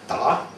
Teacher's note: You can pharyngealize a stop that gives it that choky sound again